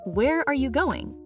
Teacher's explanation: Pitch falls on going. Many learners make it rise, but that sounds unnatural. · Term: WH question, fall